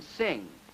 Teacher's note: the last sound in sing, a velar nasal